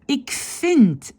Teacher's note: Le V devient F. Je ne prononce pas afval, presque impossible, je prononce afval, comme s'il y a deux F.